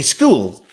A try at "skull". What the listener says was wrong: No, you said school. It's your accent, isn't it? It's a skull. Skull. School, man.